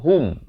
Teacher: Ha baris dhamma bunyi hu, bukan bunyi ho.